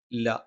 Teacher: ല നാവിന്റെ അറ്റം മേലെ മുൻപല്ലിന്റെ മോണയിലാണ്